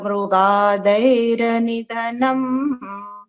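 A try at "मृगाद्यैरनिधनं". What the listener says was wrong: Mrgadyaira nidhanam. You said Mrgadair. It did not sound like Dyai. Da and Ya. Dya.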